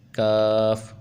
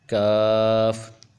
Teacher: जो मोटा काफ है इसको जुबान की जड़ और तालू के नरम हिस्से से अदा करेंगे और बारीक काफ को जुबान की जड़ और ताल के सख्त हिस्से से अदा किया जाएगा